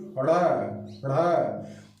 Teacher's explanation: तो जीभ को उठाकर आगे की तरफ झटकना पड़ता है, पटकना पड़ता है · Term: उत्क्षिप्त व्यंजन